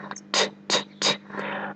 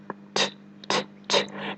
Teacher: It's clear, it's concise, it's distinct. It's made by taking your tongue tip and tapping it on the ridge behind your top front teeth. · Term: true T